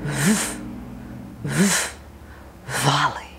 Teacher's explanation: notice the V teeth on the lower lip